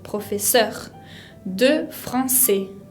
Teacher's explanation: La R final de professeur se pronuncia como en la garganta